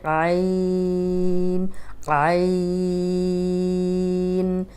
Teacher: عین لمبا کریں گے، ان میں چھوٹی سی نون کی آواز آئے گی، اس کو بھی ناک میں نہیں لے کے جائیں گے